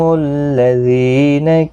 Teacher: زی یا مدہ ہے، ایک الف کی مقدار کے برابر کھینچ کر پڑھیں گے